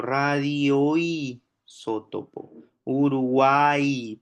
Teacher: una vocal abierta entre dos vocales eh cerradas átonas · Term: triptongo